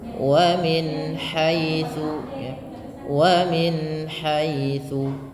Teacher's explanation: jelas dan tidak boleh ditahan suara bunyi nun ya karena dia izhar yang di mana di sini izhar artinya jelas. · Yang pertama adnal halqi, yang kedua yang paling bawah aqsal halqi, wasatul halq, dan yang ketiga adalah adnal halqi. Nah, ha termasuk huruf yang ada pada wasatul halq, maka huruf ha di tengah-tengah tenggorokan kita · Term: huruf halqi